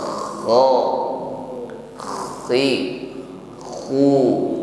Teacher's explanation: huruf kha ini juga memiliki sifat isti'la, tasa'udus shaut ilal hanakil a'la, suara terkumpul naik ke langit-langit atas sehingga tebal suara yang keluar